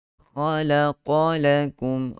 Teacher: kha tebal, lam nipis, qaf tebal, lam nipis, tebal nipis. Kena hati-hati Tak nak khalaqala semua panjang, semua tebal.